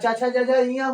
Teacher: तालू से य का शुरुआत होता है तालू यहां देखिए तालू से य का शुरुआत होता है है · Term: तालू वर्ण